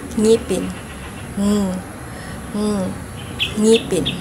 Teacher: ito ang titik na ng velar. Ito ay pailong na may tunog.